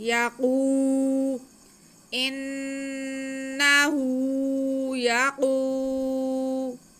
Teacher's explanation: قاف کو ہم موٹا کر کے بھی پڑھیں گے اور تھوڑا سا کھینچیں گے بھی ایک الف کے برابر۔ یقو، انہو یقو، آگے لام پہ پیش ہے، اسے بالکل نہیں کھینچنا۔